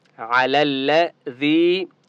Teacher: علی الذی یا مدہ ہے. ذال کو ایک الف کی مقدار کھینچ کر پڑھیں گے. · لام کو لام کے ساتھ ملائیں گے. علی الذی یا مدہ ہے.